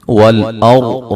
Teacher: را کو موٹا ادا کریں گے